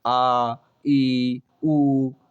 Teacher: दूसरा होता है आपका दीर्घ स्वर। इनके उच्चारण में हास्य स्वर से दुगना अर्थात 2 मात्रा का समय लगता है।